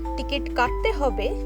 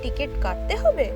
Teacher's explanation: The statement, ticket katte hobe, means tickets have to be bought. But when spoken with a rising intonation, it turns into a question. Do we have to buy tickets?